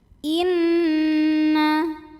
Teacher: Inna, ada hukum gunnah musyaddadah karena nunnya bertasydid, maka dengung, bunyi n-nya tahan kurang lebih 2 harokat.